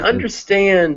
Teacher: In understand, the stress is actually on both.